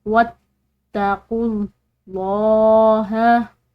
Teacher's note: लफ्ज़ अल्लाह की लाम भी मोटी पड़ी जाएगी क्योंकि इसके पीछे वाले हर्फ यानी कि काफ पर ज़म्मा यानी पेश है